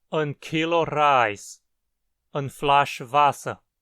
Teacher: Perceba que pronunciamos as duas palavras acentuadas.